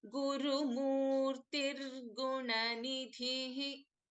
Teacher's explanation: So when we are chanting these two names together, there is a sandhi happening. So instead of Guru Murtihi, we are chanting it as Guru Murtir Gunanidhihi